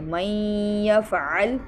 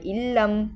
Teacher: ہم نے من یفعل میں غنہ کیا تھا لیکن علم اور مر ربک میں غنہ نہیں کیا